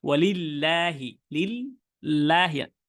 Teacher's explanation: আমার যে আগাটা জিহ্বার, সেটা কিন্তু আমি উপরের দিকেই একদম, যে দাঁত আছে আমাদের, দাঁতের যে গোড়াটা আছে, এই গোড়া দিয়ে কিন্তু আমি লাগাচ্ছি। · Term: মাখরাজ